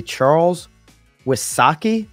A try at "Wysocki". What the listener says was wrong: Wisaki. Why Saki? The Y is hard. Why? Wisaki.